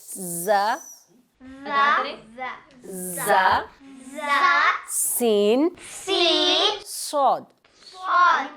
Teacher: इन तीनों में सीटी की आवाज़ आ रही है, इसलिए इनको हरूफ सफीरिया, सीटी वाले हरूफ कहते हैं।